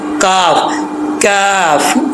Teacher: अब यहाँ पर बाज़ औक़ात काफ पढ़ते वक्त लोगों को परेशानी होती है, तो ये इसका मखरज आपको बता देता हूँ कि ज़ुबान जो है आपकी ये ऊपर वाले तालू जो सख्त जगह है तालू की वहाँ पर लगेगी तो ये काफ पढ़ा जाएगा। जुबान की जड़ ऊपर वाले तालू का जो सख्त जगह है खुरदरा वहाँ पर लगेगी तो काफ पढ़ा जाएगा